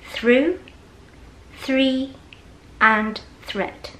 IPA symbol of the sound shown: thr